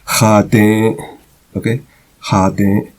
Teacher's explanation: The E is with a nasal, and it ends in a glottal stop.